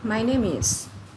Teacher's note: My name itu kan berakhiran dengan M, bukan dari katanya berakhiran dengan E, tetapi ketika kita menghasilkan suara dalam tenggorokan kita akan menghasilkan huruf M. M akan bisa digabungkan dengan vowel atau di sini ada huruf I. Anda bisa sambungkan dengan my name is. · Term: linking sound